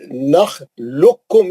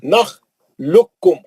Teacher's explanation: اس میں وہ ادغام متقارباً ہے، خاف اور کاف کا، دونوں مخرج قریب ہے، خاف ساکن ہے اور کاف جو ہے مشدد ہے۔ کاف لام کے پیش سے سیدھا کاف میں چلے جانا، خوف نہیں پڑھنا کیونکہ وہ ادغام ہو گیا اس کا۔